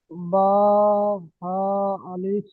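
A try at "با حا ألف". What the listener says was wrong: আলিফ টান হয়ে যাচ্ছে আর তাড়ি দেয়, এরকম পড়তে হবে। বা, হা, আলিফ, বা, হা, আলিফ।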